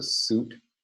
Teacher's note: word voice limit and it contains the high-back valve rule and ends in a voiceless alveolar stop